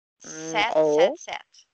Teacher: Então é o E com a boca de A. Set, aberta.